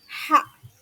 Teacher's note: Tidak boleh ada suara yang keluar. Maksudnya suara seperti ho ya, harus bersih h itu. Karena h itu keluarnya dari paling dalam. · pangkal lidah mendekat ke pangkal tenggorokan maka menyempit saluran tenggorokan. H. Tidak boleh ada suara yang keluar.